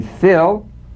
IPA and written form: fɪl (fill)